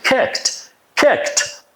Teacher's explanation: Kicked is inappropriate because the word is ending on the K sound and it's an unvoiced consonant sound